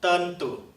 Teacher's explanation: That e is pronounced as /ə/ so it is tentu